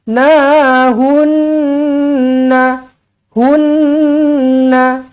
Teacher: Nun sabdu wajibul gunnah, dengungkan dua harakat.